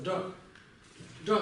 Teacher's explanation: И здесь у нас еще добавляется церебрализация, то есть получается из Ка такого низкого получается Га, довольно звонкое, высокое, и к нему еще добавляется вот этот изгиб языка, получается Джа.